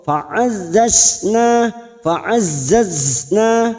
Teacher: ujung lidah menempel ke ujung gigi seri bawah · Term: huruf zain